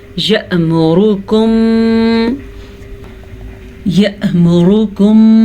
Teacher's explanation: یہاں پہ حمزہ پہ ساکن ہے تو جھٹکا پیدا ہوگا